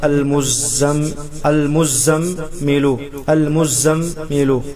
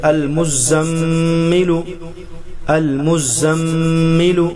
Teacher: میم پر سختی کر کے غنہ کو ایک الف بڑھا کر پڑھا جائے گا